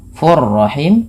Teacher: cara membacanya tanwinnya masukkan kepada huruf ro dan ditahan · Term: Idam Bil guna